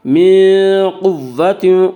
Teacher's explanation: قاف کو پر پڑھیں گے، قاف حروف مستعلیہ میں سے ہے، حروف مستعلیہ 7 ہیں جن کا مجموعہ خص ضغط قز ہے جو ہمیشہ ہر حال میں پر پڑے جاتے ہیں۔